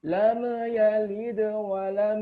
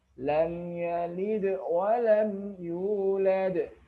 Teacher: huruf mim yang disukunkan ini tidak kita baca pantul